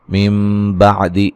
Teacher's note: نون ساکن کا اقلاب ہے، نون کو میم سے بدل کے غنے کے ساتھ پڑھیں گے